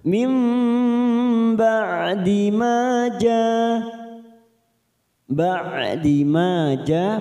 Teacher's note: sukun dua harakat m nunkun beremu ba namanya bacaan iqlab ya cara membacanya membalikkan huruf nun sukun kepada huruf ba seperti bertemu dengan huruf mim ya kita tekan selama tiga ketuk mim ba'di Ma ja ba'di Ma ja Ma fathah dikuti Alif